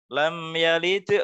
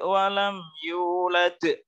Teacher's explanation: lam yalid itu halnya pantulannya lebih kecil daripada walam yulad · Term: Qolqolah Sugro